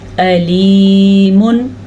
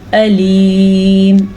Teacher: वैसे तो ये अलीमुन है लेकिन ये वक्फ आने की वजह से आखिरी लफ्ज़ को साकिन कर देंगे तो ये बनेगा अलीम